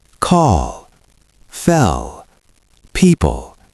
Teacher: Dark L comes after a vowel.